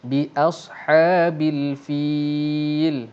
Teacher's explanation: kita perlu baca dengan kadar panjang 2 ataupun 4 ataupun 6 harakat, dan saya memilih untuk membaca dengan 4 harakat. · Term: mad arid lis sukun